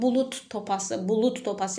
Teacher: Məsələn, bulud topası, bulud topası yazılır, bulut topası deyilir